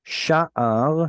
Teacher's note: Sha'ar has penultimate stress.